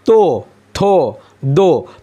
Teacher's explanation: तो थो का जो वर्ग है वह दंत से